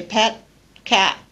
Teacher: I don't aspirate the T, I leave my tongue behind the teeth on the alveolar ridge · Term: unreleased